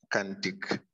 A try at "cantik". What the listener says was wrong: Not can. How to pronounce C?